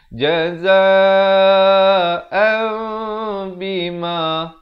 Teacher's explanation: mim itu bibir atas dengan bawahnya itu hampir bersentuhan sahaja ataupun sekadar bersentuhan sahaja. Dua-dua betul. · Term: hukum iqlab